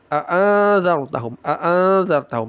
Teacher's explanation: Izhar syafawi. Dibaca jelas mim sukunnya. Jangan ada guna.